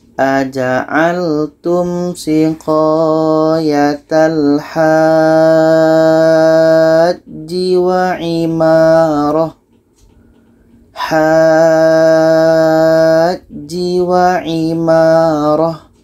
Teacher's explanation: Cara bacanya, ha ini kita panjangkan 6 harkat baru masuk ke huruf ja yang ada tasydidnya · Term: mat lazim kilmi mutsaqqal